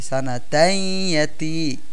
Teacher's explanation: এখানেও দেখেন তাইয়াতি, তানবিনের পরে ইয়া আসছে যেটা ঈদগামে বাগুন্নার হরফ, এজন্য ইয়াকে তাসদিদ দিয়ে আমরা গুন্নাহ করে পড়তেছি